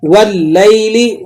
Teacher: واو کو لام سے ملائیں گے آپ اور الف لام کو نہیں ادا کریں گے کیونکہ لام بھی حروف شمسیہ میں سے ہے۔